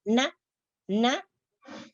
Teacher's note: maka ada udara yang keluar dari pada hidung